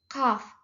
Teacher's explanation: Infijar dia itu ada letupan ketika mengeluarkan hurufnya